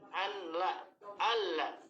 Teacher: nunnya hilang sama sekali, nggak ada, hilang sama sekali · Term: kamil